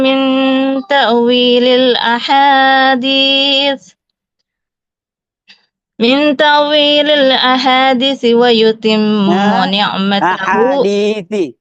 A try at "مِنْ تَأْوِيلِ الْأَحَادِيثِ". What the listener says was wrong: Ahadithi. Di-nya juga panjang, 2 ketukan.